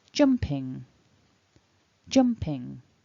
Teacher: we've got that in ending which vibrates up in the nose · the jump gets the stress in that two-syllable word jumping · As always with the ing form, we've got that ing ending which vibrates up in the nose, and we combine it with the p to make ping, jumping, jumping. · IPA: /ŋ/